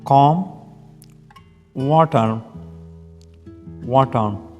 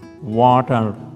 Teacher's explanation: British English drops the R sound, while American English pronounces it clearly.